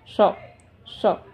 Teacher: ये जीभ थोड़ा सा पलट के ये मूर्धा साइड को लगती है, श श, ये रफ पार्ट में लग रही है श, इसको ऐसे प्रोनाउंस करते हैं।